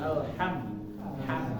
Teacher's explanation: Karena mim ini termasuk dari huruf-huruf yang keluar dari bibir.